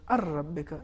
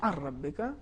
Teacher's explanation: اگر ہم ادغام کریں گے تو یہ ہو جائے گا الربک، نون بالکل حذف ہو جائے گا. صحیح تلفظ اس طریقے سے الربک، نون نہیں پڑھا جائے گا.